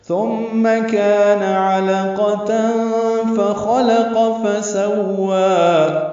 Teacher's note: ثم مثال نرمی سے پڑھیں گے، میم مشدد پہ غنہ ہے، کان میں کا الف مدہ ہے، 2 حرکات لمبا ہے